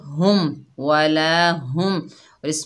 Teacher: ये छोटी हा है, इसको सीने से अदा करेंगे